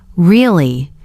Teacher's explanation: if you say really with a flat tone, it sounds like you're not impressed